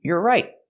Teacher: We hear the T in right as a stop T.